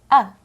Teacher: It sounds like a quick uh. It's an unclear sound, almost not a sound. This unclear sound is in the short, unaccented syllables. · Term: schwa